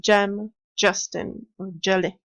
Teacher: the sound j, which is a bit like d and je combined. Again, tongue touches the alveolar ridge.